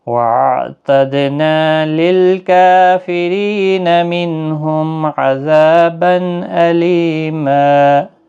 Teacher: منہم نون ساکن کے بعد حروف حلقی کا ہے، اظہار حلقی ہوگا، گنہ نہیں کریں گے، میم ساکن کے بعد آئین ہے، اظہار شفوی ہوگا